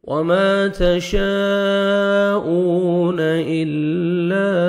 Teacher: کھینچنا ہے واو ساکن سے پہلے پیش ہے وما تشاءون الا حروف مدہ کے بعد نیکسٹ کلمہ میں دیکھیں حمزہ آ رہا ہے تو یہ مد جائز ہے 3 سے 4 سیکنڈ ایکسٹرا مد بھی کرنی ہے